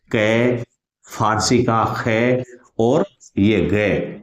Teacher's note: ये तीन ध्वनियां बच गई, कै ख ग फारसी की। अरबी फारसी की जो तीन ध्वनियां हैं इनका उच्चारण जिह्वा मूल से होता है, इसलिए इन्हें कहते हैं जिह्वा मूलीय ध्वनियां।